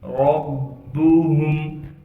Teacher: ہا کو میم سے ملانا ہے بغیر غننے کے